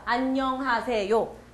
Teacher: 한 음절마다 강도가 똑같고 음도 똑같고 억양도 다르지 않아요. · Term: 음절 단위 언어